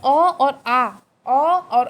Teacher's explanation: अ और आ का जब उच्चारण स्थान होगा तो आपको पता चलेगा कि अ और आ की ध्वनि कंठ से निकल रही है